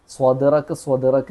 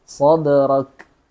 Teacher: സ്വാദ് പറയുമ്പോൾ ചുണ്ട് കൂർക്കാൻ പാടില്ല. സ്വദറക്ക് എന്ന് ചുണ്ട് കൂർക്കാതെ സദ്റക്.